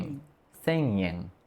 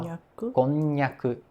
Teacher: no 100 yen a gente não toca a língua no céu da boca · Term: nasal